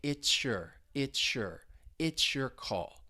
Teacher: that TS plus the Y sound in your, they blend together and you get a sh, like it's your call. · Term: assimilation